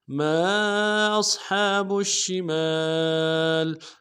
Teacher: امداد میں کھینچیں گے، حمزہ کو صاد کے ساتھ ملانا ہے، صاد کو موٹا کریں گے، ہا کو گہرائی سے ادا کریں گے، با کو شین کے ساتھ ملانا ہے، تفشی واضح کریں گے ، شین کے اوپر تشدید · میم کے ساتھ الف مدہ ہے، الف مدہ کے اوپر مد عارض ہے، دو الف امداد میں کھینچیں گے